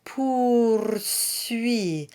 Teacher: So the R is rolled and it doesn't need to get the lips or the jaw involved.